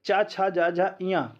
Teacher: चा, छा, जा, झा, इया का उच्चारण तालु से होता है, तालव्य से होता है